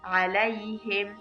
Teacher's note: لای کې مدی لین کیږي یعنی ډیر نرم آرام ویل کیږي. علیهم ها د حلق له اول حیثیت څخه ادا کیږي